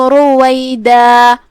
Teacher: کلمت رویدہ میں یہاں را کا حکم تفخیم کیونکہ اس پہ پیش ہے, تو اس کا دھیان رہے. آخری میں ہم کلمت رویدہ پہ روکیں گے تو اپنی آواز 2 مد کے برابر لمبی کریں گے, کیونکہ تنوین زبر پہ روکا جاتا ہے تو مد الف سے روکا جاتا ہے.